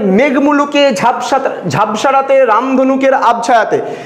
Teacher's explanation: মেঘের ওপরে একটা জোর পড়বে, ঝাপসার উপরে একটা জোর পড়বে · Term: প্রবল শ্বাসাঘাত